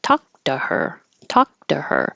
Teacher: the to changes to Du